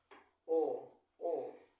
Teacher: la o es una vocal media posterior